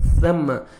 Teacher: سا کو نرمی سے ادا کرنا ہے، سم سین نہیں پڑھنا، نہ آپ نے صم صاد پڑھنا ہے. ثم، سامنے والے اوپر والے 2 دانت ہیں وہاں زبان کو نیچے، زبان کا کنارہ فرنٹ جو زبان ہلکی سی نوک زبان کی ٹچ ہونی چاہیے.